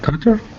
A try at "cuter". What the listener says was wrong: Yeah, and this gets the long U, cuter.